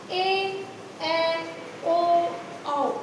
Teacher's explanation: ए ओ औ, इनको बोलने में हमें ह्रस्व स्वर से डबल टाइम लग रहा है।